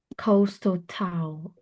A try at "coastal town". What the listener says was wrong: Town. Give it a bit more time. Coastal town. No, it's the town. It's town.